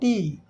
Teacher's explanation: जीभ जा के ऊपर वाले दांत का जो मसूड़ा है पीछे जहां से दांत निकला है वहां जीभ जाएगी हवा रोकेगा उसके बाद हवा फिर हवा रुकेगा फिर हवा ठेल देगा और की आवाज आएगी।